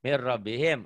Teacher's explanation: bunyi n-nya jadi masuk melebur ke er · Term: dileburkan tanpa ditahan